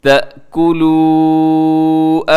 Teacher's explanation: اس آیت مبارکہ کے اندر دیکھیے گا وَلَا تَأْكُلُوا، یہاں دیکھیے گا سب سے پہلے تا زبر حمزہ، تا اس کو اپنے جھٹکے سے پڑھنا ہے، حمزہ جھٹکے سے پڑھا جاتا ہے، الف کو نرمی سے پڑھا جاتا ہے